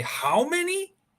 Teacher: you will intone and put stress on how